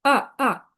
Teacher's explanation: 4 নম্বর টোনকে falling tone বলবো। এটা falling ভেবে নিচে নামে।